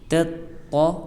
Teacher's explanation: تا ہے کہ جس کا پرننسیشن ہے سخت اور باریک، اور اس کے بعد طا ہے کہ جو حروف مستعلیہ میں ہونے کی وجہ سے پر ہے یعنی موٹی ہے · ہم نے اس کا دھیان رکھنا ہے۔ ہم کہیں گے تطا پہلے سخت باریک پھر موٹا